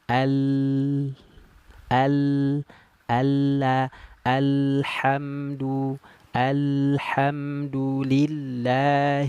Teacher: ujung lidahnya tadi naik ke langit-langit sehingga suaranya tidak bisa keluar dari depan akhirnya membelok dari sisi kiri dan kanan lidah